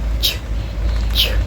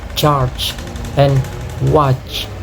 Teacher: This sound is found in a word like charge and watch. It begins with a complete blocking of airflow at the alveolar ridge, followed by a release through narrow constructions.